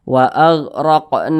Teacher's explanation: panjangnya dua harakat atau kira-kira dua ketukan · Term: mad badal